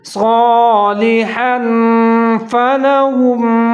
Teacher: اخفا کریں گے، مطلب آواز کو ناک میں تھوڑا سا چھپائیں گے